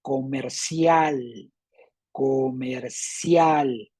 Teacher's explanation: y la fuerza está en cial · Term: sílaba tónica